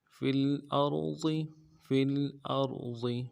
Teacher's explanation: را کو موٹا ادا کرنا ہے، ضاد کو موٹا ادا کرنا ہے، ضاد کے زیر کو نرمی سے پڑھنا ہے